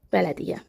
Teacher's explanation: Tələffüzdə y-nın biri düşəcək. Bələdiyyə formasında tələffüz olunur.